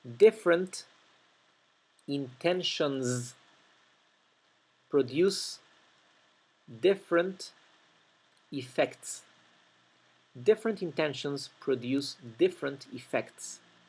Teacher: la parte más difícil de pronunciar son todas esas consonantes finales que terminan cada una de estas palabras y poder enganchar eso con la palabra siguiente, ¿sí? Traten de, por leer todo de forma fluida, traten de no comerse, de no omitir la NT final, la NS final, ¿verdad?